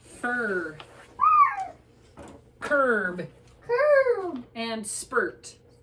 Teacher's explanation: Do you feel the side of your tongue kind of going up the side, kind of like the side curler? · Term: Bossy R